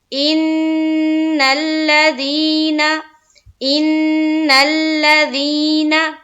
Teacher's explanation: ایک الف کے باقدر روکنا ہے آواز کو ناک میں۔ ان الذین، ان الذین، ان میں مشدد کیا نون کے اوپر، پھر نون کو لام سے ملایا اور لام کو پھر زبر کی حرکت کے ساتھ پڑھنا ہے۔